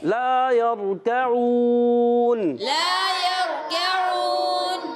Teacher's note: آخر میں نون کو ساکن کر دیں گے، وقف بال اسکان · تو ہم نے اس کو ایک الف کھینچنا ہے، را ساکن سے پہلے زبر آ گیا، را پور ہو جائے گا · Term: مد عارض